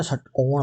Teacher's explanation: पूरी जीभ है वो मूर्धित हो जाती है, मुड़ जाती है, इसलिए इनको बोलते हैं मूर्धा वाले